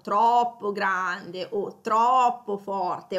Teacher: Quindi intensifichiamo anche con l'allungamento della O quando lo pronunciamo · Poi abbiamo anche forte o troppo forte, quel troppo ovviamente rafforza, come anche il troppo grande, e in realtà allunghiamo la O